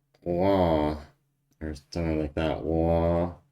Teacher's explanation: It's like a W but without the lips